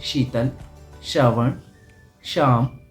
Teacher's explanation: तो आपको अपनी टंग को दांतों के ऊपर, यानी कि दांतों के और तालू के बीच में टच करना है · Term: शक्कर वाला शा